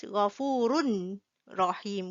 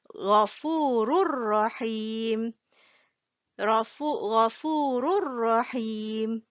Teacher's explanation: So this Tanween here, when it meets Ra, right, the N sound will disappear. We do not read this as Ghafurun Rahim.